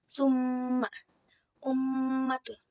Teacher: mendengungkan huruf mim dan nun bertasydid di pangkal hidung selama 2 atau 3 harakat. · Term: gunnah